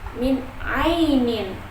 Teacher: Nun mati itu bertemu dengan huruf Ain maka termasuk izhar dan dibacanya jelas tidak dengung sama sekali Min Ainin Ai Ainin itu huruf Lin karena huruf ynya sukun